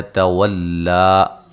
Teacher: لام کو موٹا نہیں کریں گے